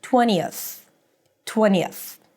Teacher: So 20th, the tongue is out. Then as you breathe out for the th you want to pull the tongue in. 20th. Make the S a little longer to make sure that you brought it inside.